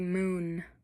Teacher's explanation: Um so, when we say moon, um you can also hear a vibration in our vocal folds. And that means they're activated.